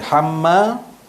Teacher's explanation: Mim ni mim bersabdu wajibul gunnah.